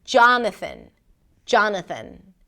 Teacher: It's kind of like you want to bring the tongue out for the th and then pull it in really quickly for the n